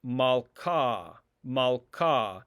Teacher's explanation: the h is not really pronounced it's malka without an h sound · The He is not pronounced in this case